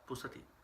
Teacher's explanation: Now, this p is aspirated.